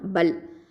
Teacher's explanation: அடுத்ததான் பல், ப ஃபதா லாம் சுக்கூன் பல். இந்த ப அப்படிங்கிறது ஷஃபத்தான உதல் எழுத்து. லாமில் சுக்கூன் இருக்குது, இது ஜஹ்ரு தவசுத் அப்படிங்கிற தன்மையை கொண்டது.